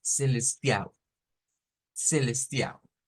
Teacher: en Brasil decíamos que cuando hay ls al final no se Suena la l sino que se cambia la L por una u